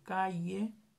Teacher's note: surge un sonido yod, que no es ni más ni menos que una i que entra en diptongo con la vocal que continúa. Con la vocal que le sigue.